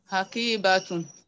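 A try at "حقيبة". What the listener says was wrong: Hakiba. When we stop at that, it becomes ha.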